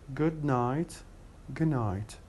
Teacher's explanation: Instead of saying good night, we say good night. We drop the de sound, and we replace it with ne.